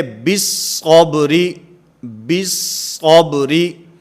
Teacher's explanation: اس کے اندر با کو صاد کے ساتھ ملا کر پڑھا جائے گا، اس کے اندر لام تعریف کو نہیں پڑھا جائے گا